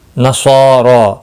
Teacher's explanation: نصارا صاد مستعلیہ ہے، پر پڑھا جائے گا